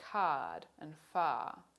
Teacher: point of the tongue is between the front and the back in australian english it occurs in words like card and far and note that there's no r sound in these words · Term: low central vowel